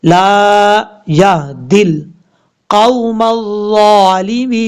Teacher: دال کو ڈائریکٹ لام کے ساتھ کنیکٹ کریں گے ، بیچ میں الف ہے اس کو بھی چھوڑ دیں گے،